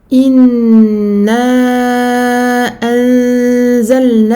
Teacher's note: Ghunna complète de très longue durée.